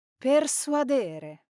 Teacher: the stress in this infinitive verb falls on the second to last syllable, so we say persuadere because it comes from the Latin suadere, to convince.